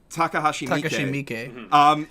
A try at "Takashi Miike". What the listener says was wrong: Takashi Miike. There's no H in there,